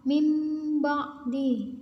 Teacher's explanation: Apabila ada Sukun dan tanwin bertemu dengan huruf ba maka keduanya ditukar dengan huruf mim Tetapi hanya dalam bentuk suara · apabila ada hukum nun sukun atau tanwin bertemu dengan huruf ba, ini dibaca iqlab, yaitu mengubah bacaan nun sukun ini tadi atau tanwin menjadi huruf mim. Jadi suaranya itu seperti huruf mim, menjadi huruf mim.